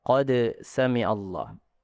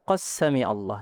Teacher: Dalam hafz itu dibaca izhar. Dalam riwayat lain itu dibaca idgham.